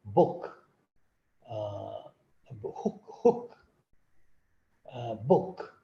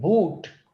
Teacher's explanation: we use shorter vowel in a word like book, hook, book, but in the word like boot, we use longer oo.